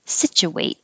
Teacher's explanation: it's not stressed so the oo relaxes to an uh and you don't have to round your lips situate and if it was situated the way this t